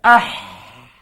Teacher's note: menekan suara di tengah halqu atas sedikit daripada makhraj huruf ain. Kalau ain di bawah tadi ha atas sikit. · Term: huruf ha